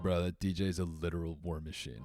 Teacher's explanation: You got to put a little Los Angeles vocal fry on that one.